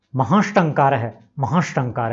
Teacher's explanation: ट जो है मूर्धन्य वर्ण है और स दंत्य है, तो स को भी मूर्धन्य शकार में बदलना पड़ेगा।